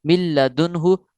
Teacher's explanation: نون ساکن کو نہیں پڑھنا، میم کو ڈائریکٹ لام مشدد کے ساتھ ملانا ہے